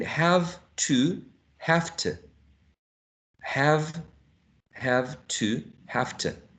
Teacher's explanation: the long u, the full form of u was reduced to a schwa